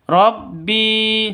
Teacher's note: bi panjang dua ketukan karena ada ya mati diawali dengan kasroh, atau ya mati itu sebelum ya mati itu ada kasroh, makanya disebut dengan mad asli.